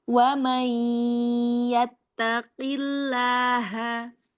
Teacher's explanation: makhraj qafnya ya mau lebih terasa ketika dia kasroh